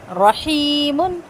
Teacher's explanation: را کو پر کریں گے, ہا یا زیر ہی 2 کاؤنٹس لمبا کریں گے